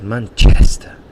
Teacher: I've got a friend, he's from Paraguay, and he always laughs at my pronunciation from Manchester, because he says Manchester, and he really exaggerates the chest, and that's where the stress is in that word, in that noun.